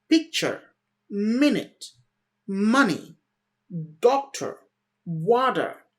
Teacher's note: my stress was in the first part picture so the first part was louder as well as a bit higher as well as a bit longer